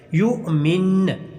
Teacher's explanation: یا کو جھٹکا دینا ہے کیونکہ حمزہ کے اوپر جزم ہے۔ یؤمن، اچھی طرح اس کے اوپر مشق کیجیے گا۔